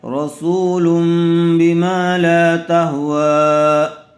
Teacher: تنوین یا نون ساکن کے بعد با آئے تو نون کو میم سے بدل کر غنہ اور اخفا کے ساتھ پڑھیں گے. اس کو اقلاب کہتے ہیں.